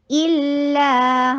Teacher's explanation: حمزہ شدید بالکل کلیئر آواز اور لام کے اوپر توسط دیجئے